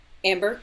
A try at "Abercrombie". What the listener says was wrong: Abercrombie. There's no M in it.